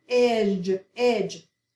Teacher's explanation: Short E. You don't really hear the D, but we have that J sound there.